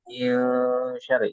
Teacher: Min syarri itu Min ditahan 2 sampai 3 harokat ya. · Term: samar